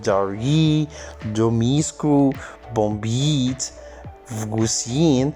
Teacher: The r and the m and the b and the s sounds are palatalized. This is very clear from the superscript y that is actually superimposed on the primary articulation of these sounds.